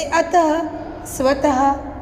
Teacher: इसका उच्चारण ह की तरह होता है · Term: विसर्ग